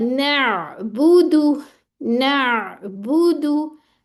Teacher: बा पे होंठ गोल, दाल पे होंठ गोल